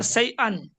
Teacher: হামজার উপরে দু জবর এসছে, দু জবর তানবিন বলে। তানবিনের আওয়াজ নাকের মধ্য থেকে বেরোয়।